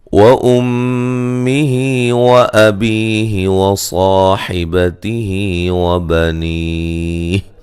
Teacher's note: میم مشدد پہ غنہ ضروری ہے